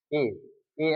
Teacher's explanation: ए ए किससे है? कंठ और तालव्य से है। ठीक है? कंठ और तालव्य।